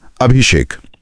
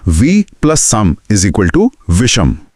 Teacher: यदि स यानी दंत स से पहले अ या आ को छोड़कर कोई और स्वर आए। जैसे ई ई उ ऊ तो स बदलकर श यानी मूर्धन्य श हो जाता है।